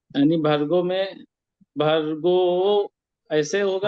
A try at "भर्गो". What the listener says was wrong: तत्सवितुर्वरेण्यं भर्गो, भर्गो ऐसा करके ओकार को नहीं करेंगे, ओकार को नहीं खींचेंगे यहाँ पे। जी भर्गो ऐसा करके नहीं, स्वरित तो है लेकिन वहां पे द्वित्व नहीं होगा, वहां पे मतलब उसको द्वित्व स्वर ऐसा करके नहीं बोलेंगे वहां। हाँ हाँ भर्गो, भर्गो देवस्य धीमहि, ऐसा करके।